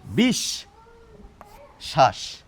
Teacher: বফলা এই শয়ের সঙ্গে যুক্ত, এই শটি দেখুন দুবার এসে যাচ্ছে আমাদের উচ্চারণে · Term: দ্বিত্ব